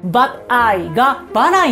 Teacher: T▁が母音と母音に挟まれた時、ソフトな印象の音に変わる現象になります 。アメリカ人からすると▁D▁っぽいサウンドに聞こえるらしいんですけれども、日本人の私たちとしてはどちらかというと、日本語のラリルレロの音に近く聞こえます。なので、バッアイがバライに聞こえますね。動画を再度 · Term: フラップ▁T